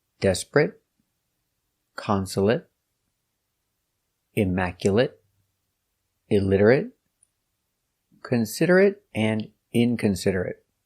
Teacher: They are not verbs, so they are not pronounced ate, but they are pronounced it.